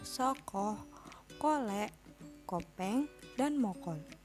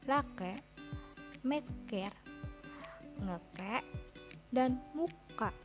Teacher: bunyi keh plosif velar diikuti oleh vokoid belakang, sedangkan bunyi keh plosif palatal diikuti oleh vokoid depan